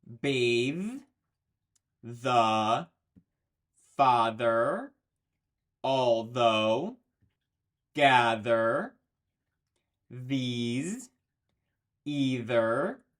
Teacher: the voiced TH sound, your throat is vibrating. You can feel it in your throat.